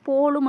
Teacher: ஈற்றில் இருக்கிற இந்த இம்முங்கிற எழுத்தினோட மாத்திரை வந்து 1/4 மாத்திரையாக ஒலிக்குது. இதுதான் மகர குறுக்கம்.